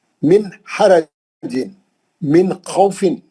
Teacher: کہیں بھی نون کو نہیں کھینچنا، کہیں بھی نون لمبا نہیں کرنا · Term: اظہار حلقی